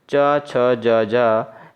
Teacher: तालव्य व्यंजन हैं, तो वे व्यंजन जो तालु की सहायता से बोले जाते हैं उन्हें तालव्य व्यंजन कहते हैं और चा वर्ग के सभी सदस्यों का उच्चारण स्थान तालु के द्वारा होता है